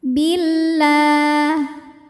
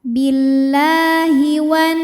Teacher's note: Hukumnya madnya mad tabi'i muqaddar ya, karena ada lam berharokat fathah berdiri, maka lam panjang 2 harokat